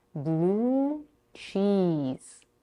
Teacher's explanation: the next two words blue and cheese have two high tense vowels o and E respectively blue cheese and the whole line five